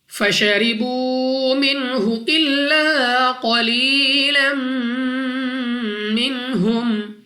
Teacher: را کے نیچے زیر، تو را کو باریک پڑھنا ہے، اپنی آواز کو نیچے گرا کر